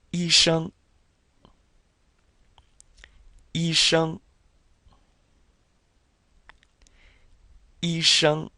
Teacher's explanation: Remember, you're curling your tongue with the SH.